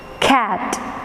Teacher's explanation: The k comes along with a h sound. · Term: aspirated